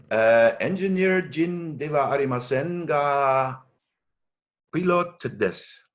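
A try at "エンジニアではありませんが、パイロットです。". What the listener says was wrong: So you don't have to say engineer Jin. So just saying engineer is actually just a good way of describing it.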